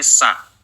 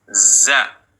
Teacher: Kalau nafasnya dikeluarkan, maka akan menjadi sa. Nah, ini nafasnya mendesis. Kalau ini za, suaranya yang mengalir.